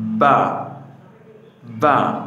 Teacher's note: 2 ঠোঁটের ভিজা অংশ হইতে উচ্চারিত হইবে।